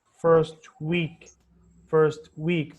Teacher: the word first has a falling intonation and then week has the rising intonation